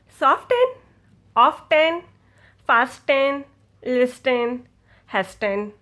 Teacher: So, you cannot hear a T i do not say it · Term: silent T